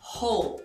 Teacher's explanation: E a pronúncia é com H aspirado no início